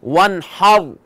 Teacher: فتحہ، تو فتحہ کی وجہ سے را کو موٹا پڑھیں گے. وانحر.